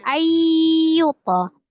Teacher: Nun sukun atau tanwin ketemu dengan huruf ya idgham bi gunnah. diidghamkan, ditasdidkan ke huruf ya disertai dengan dengung.